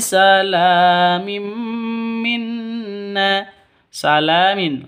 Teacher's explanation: salamin la panjang dua ketukan di sini karena ada alif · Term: mad asli